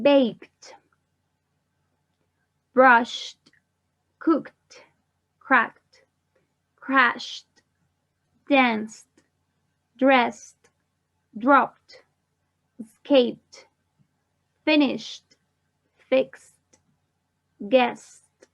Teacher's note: the voiceless verbs that we pronounce as a T at the end. We don't add an extra syllable